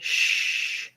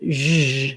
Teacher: Basically, the S in these words says the sound zh, and this is the symbol for that sound. It's just like the SH sound, except my voice is on. So when I say shh and zh, nothing changes with the position of my tongue or how I'm holding my mouth. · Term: zh sound